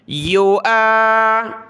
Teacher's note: حمزہ کو الف کے ساتھ پڑھ کر اوپر کھینچنا ہے، واو کو نہیں پڑھنا۔